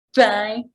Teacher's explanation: the first th in thigh happens when my tongue is between my teeth. So my tongue is between my teeth, thigh. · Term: interdental